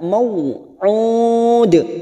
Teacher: karena ada Mad yang bertemu dengan huruf hidup dan dibaca waakaf empat harakat kita panjangkan dan ujungnya kita pantulkan karena ada huruf Qalqalah yaitu huruf Dal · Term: qalqala Kubro